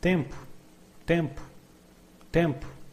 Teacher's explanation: And when a word ends in o, we commonly say u.